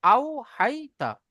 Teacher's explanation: ইয়ালিনকে নরম আওয়াজে তাড়াতাড়ি পড়তে হবে, টান দেওয়া নিষেধ। তার উপরে জাবার আছে, জাবারটি হলো হারাকাত, হারাকাতের পড়াকে তাড়াতাড়ি পড়তে হবে, টান দেওয়া নিষেধ।